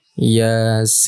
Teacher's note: Bacanya ya-nya 2 harokat dan sin-nya 6 harokat. Dengung di akhir ya.